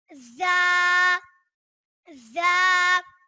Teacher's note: زا، زا میں سیٹی لائیں گے اور اس کے اوپر ایک نقطہ ہوتا ہے اور یہ زبان کی نوک اور دونوں دانتوں کے اندرونی کنارے سے ادا ہوتا ہے